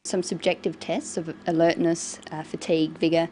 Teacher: a tone that's neither rising nor falling just a flat tone for the items in the list this tells the listener that she hasn't finished her list of